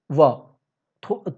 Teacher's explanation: व्यंजन वर्ण में टच होता है और दोनों के बीच, यानी कि थोड़ा दाँत, थोड़ा होंठ, व, ना पूरा दाँत लगा, ना पूरा होंठ। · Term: भीतरी व्यंजन